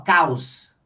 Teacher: Então esse aqui é uma semivogal. Então aqui a gente tem o ditongo decrescente porque começou no som forte, foi pro som fraco.